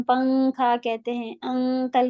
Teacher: نون ہم کلیئر نہیں پڑھتے